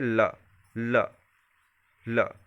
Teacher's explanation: और ल जो है किस प्रकार का व्यंजन है, अंतस्थ व्यंजन पढ़ चुके हैं, ठीक है। ल का उच्चारण करते समय हमारी सांस जीभ के बगल पार्श्व से गुजरती है। ल का उच्चारण करिए, ल, ल, ल, क्या हो रहा है, जीभ के बगल से उच्चारण हो रही है, जीभ का भी उपयोग इसमें हो रहा है। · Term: पार्श्विक व्यंजन